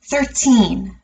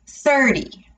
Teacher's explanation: for teen numbers 13 we would stress the end part of that word